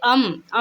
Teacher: अम का उच्चारण स्थान नाक से होता है ठीक है ना अम बोलते हैं ना तो नाक से ही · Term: अनुस्वर